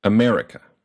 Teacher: the second syllable me is stressed uh to stress a syllable in English you do four things · America, where the second syllable, me, is stressed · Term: word stress